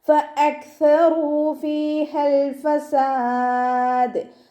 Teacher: ഫഅക്സറൂ ഫ ലൈറ്റ് ആക്കിയിട്ട് ഉച്ചരിക്കുക. മേലെ മുൻപല്ലിൻ്റെ അറ്റം താഴെ ചുണ്ടിൻ്റെ ഉൾവശത്ത് നനഞ്ഞ ഭാഗത്ത് കൊണ്ട് വെച്ചിട്ട് ഉച്ചരിക്കുക.